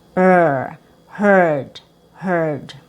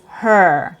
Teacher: There's a wider gap between the teeth. Your tongue is curled inside and it's pointing up and it's not touching anything. And it's also just the sound for the consonant R. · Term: schwa plus r